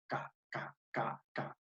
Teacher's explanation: Mi lengua roza con los velos de mi cavidad bucal, pero que al mismo tiempo, profe, es sorda. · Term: velares